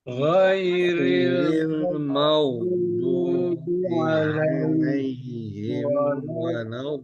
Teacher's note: Ghairil maghdu diseret rokhwahnya jangan lupa, bukan makdu tapi maghdu